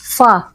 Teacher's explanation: सा मतलब हमारा होठ हल्का सा दबेगा ये फ अदा होगा ऊपर के दांतों का जो मतलब नीचे का हिस्सा है उससे लगता हुआ फ अदा होगा